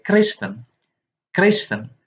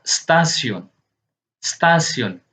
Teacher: Nah, kalau kita perhatikan, walaupun konsonan K ini tidak memiliki vokal secara langsung, tetapi ketika kita ucapkan sebagai Kristen, Kristen, dengan sendirinya tanpa perlu bersusah payah, terdengar ada E yang terucapkan secara ringan dan cepat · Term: schwa bunyi